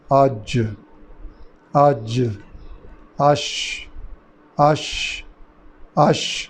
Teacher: زبان کا جو درمیان ہے برابر کے تالو، یہ آپس میں ملنے سے یہ 3 حروف ادا ہوتے ہیں. آج، آج، آش، آش، آش، یعنی آواز پورے منہ میں پھیل رہی ہے، قلقلہ نہیں ہو رہا.